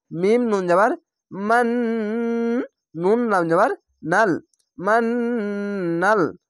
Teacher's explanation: এখানে ওয়াজিব গুন্না, গুন্নাগুলি গুনগুন করে হবে।